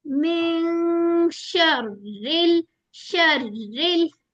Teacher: नून की आवाज ऐसे छुपानी है के बिल्कुल जैसे शीन अदा होने वाला ही हो